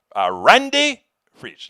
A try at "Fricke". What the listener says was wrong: Real close. Fricke. I pronounce the E on the end.